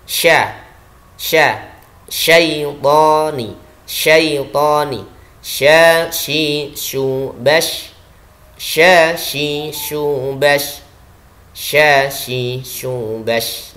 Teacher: shin memiliki sifat istifal, lidah turun ke arah bawah.